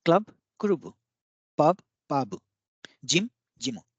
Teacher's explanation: So in each of these, you can see that the ending consonant ends with u sound because there is no consonant, if there is no vowel after the consonant.